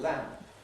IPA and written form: læmp (lamp)